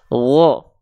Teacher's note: Atau misalnya satu lagi, misalnya huruf ghain. Ya, huruf ghain ketika berharokat fathah dia nggak dibaca gha, tapi wo